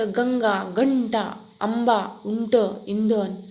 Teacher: अनुस्वाराचा उच्चार स्पष्ट व खणखणीत होतो